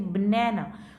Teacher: न पे स्ट्रेस जा रहा है, तो इसको लाउडर है, लॉन्गर है, हायर है, तो ये बाकी कैसे होंगे, क्वाइटर होंगे, शॉर्टर होंगे और लोअर होंगे।